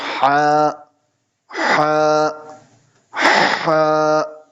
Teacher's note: اس کا مخرج ہے گلے کا درمیانی حصہ، اس کا مخرج ہے middle of throat